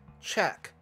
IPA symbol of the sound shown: tʃ